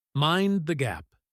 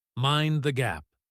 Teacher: The gap is the space between the train door and the station floor. But when spoken, it is a warning, so it is sharp. Mind the gap. It sounds like one aggressive word.